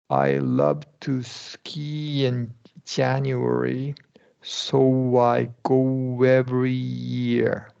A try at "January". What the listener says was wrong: Wow. Good. Yeah, you're doing good.